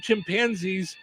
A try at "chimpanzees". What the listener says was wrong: You said chimpanzees. The emphasis is on the wrong syllable.